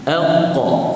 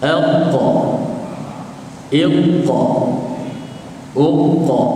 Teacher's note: Ini lidah kita, Di lidah kita ni, hujung lidah depan, ini pangkal belakang. Qaf terletak ni, bukit lidah ataupun di belakang lidah kita, menyentuh pada belakang lelangit. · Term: huruf qaf